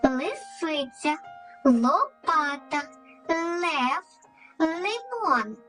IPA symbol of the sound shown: л